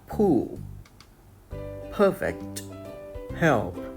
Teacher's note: Give the air pressure for a second and then open lips. There is a small explosion of air when the lips open. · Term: voiceless bilabial stop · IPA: /p/